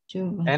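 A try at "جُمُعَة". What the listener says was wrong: itu bahasa Arabnya itu mimnya itu bukan sukun tapi dhammah. Jumu'ah gitu ya.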